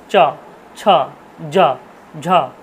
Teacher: কোথায় বাড়ি খাচ্ছে, সব তালুতে বাড়ি খাচ্ছে। তাই জন্য এদেরকে বলা হচ্ছে তালব্য বর্ণ।